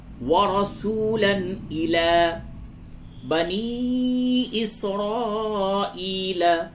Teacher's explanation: وَرَسُولًا إِلَى، تنوین، دو زبر، تنوین کے بعد حمزہ ہے حروف حلقی، تو اس جگہ پہ اظہار ہوگا